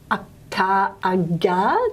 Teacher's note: the soft palate acting as a passive place of articulation for the tongue body going up